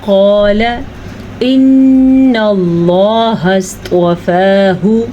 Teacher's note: قاف کو پر پڑھیں, الف مدہ کو کھینچ کے پڑھیں, لام کو لمبا نہیں کرنا